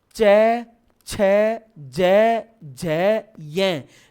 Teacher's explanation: जीभ पूरी तालू से चिपक के वापस आ रही है। इसीलिए तो च वर्ग को तालव्य वर्ण कहा जाता है। · च वर्ग में आपकी पूरी की पूरी जीभ ऊपर उस कटोरे नुमा खाली भाग तालु से पूरी चिपकेगी